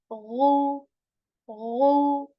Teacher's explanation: Ghain letter with a Dhamma, Ghu, which has this gargle sound